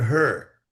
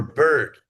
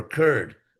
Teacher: It's actually It's like the English word her. The vowel is the r, her. Or bird, the vowel is the r.